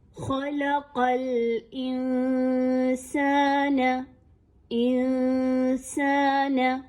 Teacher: ناک میں اور منہ میں نون کی آواز کو چھپایا جائے گا اور کسی حد تک تھوڑا سا غنہ بھی کیا جائے گا · چونکہ نون ساکن کے بعد سین ایک باریک حرف ہے اس لیے اخفا بھی باریک کیا جائے گا، موٹا اخفا نہیں کرنا